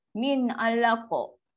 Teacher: So bila qaf dia masuk dalam kategori qalqalah. So kenalah melantun dia.